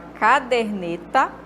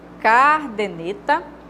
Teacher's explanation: Porque vem da palavra caderno, né? Então, a sílaba tônica dela é aqui no der e não no car